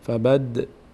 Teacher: دال اول چون ساکن از حروف قطب جدم است کمی در مخرج می‌لرزه